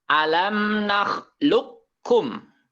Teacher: Jadi kopnya tidak dibaca karena langsung dimasukkan ke huruf kaf. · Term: idgham mutaqariban